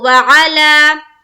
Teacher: یہاں پر عین نکالیں گے، عین کو کھینچنا نہیں ہے، زبر کی حرکت کے ساتھ ہم جلد پڑھیں گے. کھینچنا ہے لام کو، وعلی. تو پہلا نکالنا ہے عین اور لام کو ایک الف کے باقدر کھینچنا ہے.